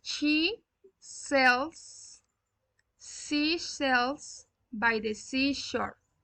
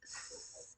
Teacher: the tip of the tongue is touching the gum ridge behind your front teeth. This is the tongue, this is the front teeth, and the tongue is behind the front teeth. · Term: alveolar